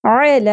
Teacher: عین وسط حلق سے باریک اواز کے ساتھ زبر کو زیادہ نہیں کھینچنا